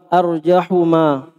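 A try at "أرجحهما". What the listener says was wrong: Arjahuma. Antum tidak rasa ada huruf yang hilang? Coba baca ulang. Tidak ada huruf yang hilang? Koedanya ha ini saudara, harus antum baca kembali tuh koedah baca kitab Gundul. Ha itu sebelumnya doma dia diapain? Sebelumnya kasro dia diapain harokatnya? Harus kau lihat kembali itu poster. Koedah baca kitab Gundul.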